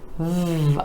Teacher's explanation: that E vowel sound coming after the consonant V, where the top teeth are connecting with the bottom lip